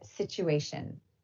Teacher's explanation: Please note, this can also happen inside just one word, like when the T and the U combine to make a ch sound in the word situation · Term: coalescence